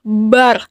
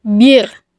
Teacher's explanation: maka suaranya sebenarnya menebal bar tapi kalau sebelumnya kasrah maka terdengar tipis bir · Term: huruf ro